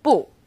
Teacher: when used on its own bu is fourth tone